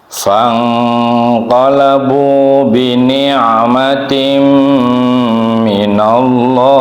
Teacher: Ini bacaan ikhfa, ya. Ikhfa yang ausat, yang murni berdengung atau berengengang, ya. Agak dipanjangkan.